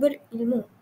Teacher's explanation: tekanan diberi pada suku kata kedua dalam perkataan berilmu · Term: tekanan bunyi